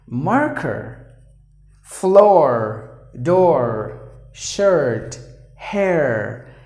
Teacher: And whatever we saw, it's completely about British English. But the Americans, they always pronounce the letter R.